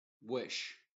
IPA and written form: wɪʃ (Wish)